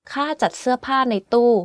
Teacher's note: Every word on this sentence is in falling tone, except จ ั ด which is in low tone, and ใ น which is in middle tone.